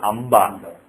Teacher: So if you have, for example, Amba, if you write like this, it's basically not Anba but Amba. You pronounce Ma.